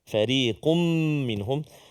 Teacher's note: Sebelum tu yang fariqum tadi tu dengung, tanwin bertemu dengan mim idgham ma'al ghunnah, dengung 2 harakat.